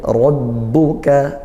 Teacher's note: ra fathah dibaca tafkhim tebal ra-nya, naikkan pangkal lidah.